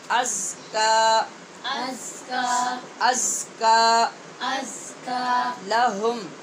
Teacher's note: اوپر کھڑی زبر ہے، اسے لمبا کریں گے اور حمزہ شروع میں جو ہے اس کو تحقیق سے پڑھیں گے،